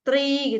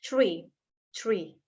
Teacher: Kalau dalam American English tuh huruf T ketemu R dibacanya jadi C.